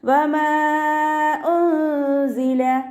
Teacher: വാവ് ഉച്ചരിക്കുന്ന സമയത്ത് ചുണ്ടുകളെ വട്ടത്തിൽ പിടിച്ചു കൊടുക്കുക കേട്ടോ, പല്ലിനെ ചുണ്ടിൽ തട്ടിക്കരുത്.